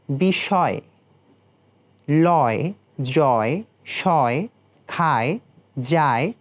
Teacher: ই অথবা একারের পরিবর্তে অ বা আ ধ্বনি এলে অন্তস্তয়ের অ বিলুপ্ত হয়ে হসন্ত রূপে উচ্চারিত হয়